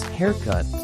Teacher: with the emphasis on the first syllable, hair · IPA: /ˈhɛəˌkʌt/